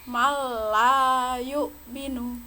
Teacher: membacanya langsung menuju ke lam tanpa mendengung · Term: idgham bila gunnah